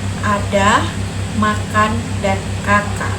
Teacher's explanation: Bentuk vokal ditentukan oleh letak lidah dan bukaan mulut. Vokal A, lidah berada di posisi rendah, mulut terbuka lebar